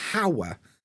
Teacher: I don't pronounce hello, hotel, or horrible. But hour, I think everybody skips the H. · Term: silent H